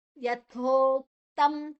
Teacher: ಯಥೋವನ್ನ ಸ್ವಲ್ಪ ಉಸಿರು ಹೊರಗೆ ಬಿಟ್ಟು ಸ್ವಲ್ಪ ಪ್ರೆಷರ್ ಹಾಕಿ ಸ್ವಲ್ಪ ಬಾರ ಹಾಕಿ ಹೇಳಬೇಕು